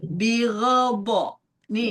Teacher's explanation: Setelah saya sambil dirasain donnya itu harus naik di sininya nih lidah-lidah di samping kanan atau kirinya naik ke atas supaya berasa tebalnya, berasa gesekan dengan atasnya dan kemudian ada aliran panjang.